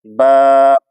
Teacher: دونوں ہونٹوں کے اندر والا حصہ جو تر ہوتا ہے اس سے با ادا ہوتا ہے